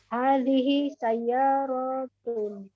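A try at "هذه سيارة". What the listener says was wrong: Ahsanti.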